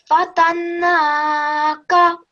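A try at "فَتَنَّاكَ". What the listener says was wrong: The timing is a little bit off, but you can practice with that, okay? Fatannaka. The noon gunna sound that you're going to make here, the timing of that is actually the same timing as for the vertical fatha, okay?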